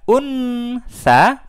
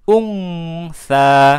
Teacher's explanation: Huruf nun dan huruf sa berbeda makhrajnya, maka cara bacanya bukan unsa, tapi kita baca ungsa. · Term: dengung